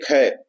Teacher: स्पर्श व्यंजन कंठ ध्वनि, अघोष और महाप्राण ध्वनि है।